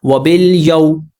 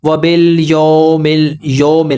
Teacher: ان دونوں کا فرق سمجھ لیجئے، وَبِلْ یَوْ، یو زبر پڑا اور واو کی طرف ہم گئے، جب واو پہ پہنچے تو پوری طرح ہونٹوں کو گول کیا ہے، واو کو ادا کرنا ہے، وَبِلْ یَوْ۔ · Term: معروف